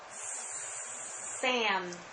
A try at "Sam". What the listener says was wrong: I don't hear your S.